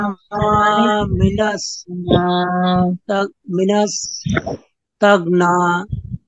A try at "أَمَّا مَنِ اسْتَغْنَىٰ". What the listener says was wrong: এখানে কি মিমের নিচে জের আছে? একটু দেখে পড়তে হবে ভাই, আর আমি তো পড়তেছি, আমার পড়াটা একটু শোনেন ভালোভাবে। أما من استغنى দেখেন আম্মা এখানে ওয়াজিব গুন্না, মানে ইস্তাগনা এক লিপ টান।